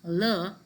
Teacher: lateral that is le which is from the alveolar region